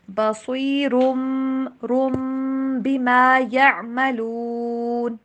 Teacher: بصیرن والی آواز نہیں آئے گی بلکہ میم والی آواز آئے گی